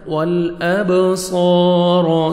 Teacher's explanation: سمع والابصار، لام کو ہم نے ہلانا نہیں ہے، با حروف قلقلہ میں سے ڈبل ساؤنڈ آئے گا. والابصار، صاد کو موٹا کر کے پڑھیں گے اور 1 سیکنڈ کھینچنا ہے